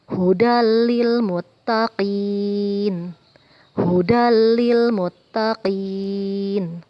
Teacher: Ada tanwin bertemu dengan huruf lam. Kita baca tidak dengung atau pendek. Ini adalah hukum idgham bila gunnah.